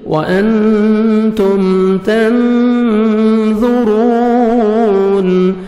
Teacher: نون ساکن کے بعد 15 لیٹرز میں سے حروف اخفاء میں سے ظا ہے, نوز میں ساؤنڈ لے کے جائیں گے · ظا کو اپنے موٹا کر کے پڑھنا ہے